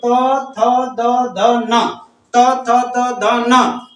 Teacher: ये त, थ, द, ध, न जीव का अग्र सिरा ऊपर वाले दांत को आगे वाले दांत को टच करता है। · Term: त वर्ग